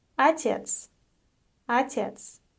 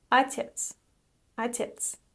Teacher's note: The unstressed O is pronounced as A.